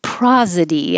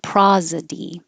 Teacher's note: it looks like an S, but it sounds like a Z. It looks like an O and it sounds like an ah.